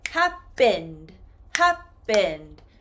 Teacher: if I change happen into the past tense, happened, happened, I do not include another syllable sound.